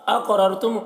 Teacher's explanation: क़ाफ पे कलकला होगा और क़ाफ को पुर पढ़ेंगे